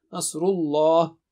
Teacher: Nasru is thick. Nasrullah, the word of lam of the letter lam of Allah is also thick.